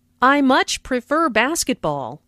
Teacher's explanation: Notice how much is stressed to show that the speaker really likes basketball.